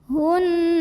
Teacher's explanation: bunyi n-nya tahan sampai ada getaran halus ke hidung, kurang lebih 2 harokat